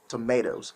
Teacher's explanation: the alveolar tap sounds more like a d but a short d